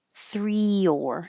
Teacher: When you go from the high 3 to the lower or, 3 or, your tongue just slides down and makes a Y. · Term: invisible Y